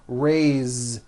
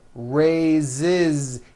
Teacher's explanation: even though it is spelled with an S, it's pronounced with a voiced Z.